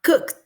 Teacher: tiene el sonido de la K, un sonido sordo